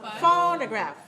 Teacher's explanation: Phonograph. First syllable is stressed.